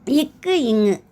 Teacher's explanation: நாவின் முதல் அன்னத்தின் அடிப்பகுதியில் பிறக்குது